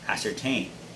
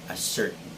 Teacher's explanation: the stress should be on the third syllable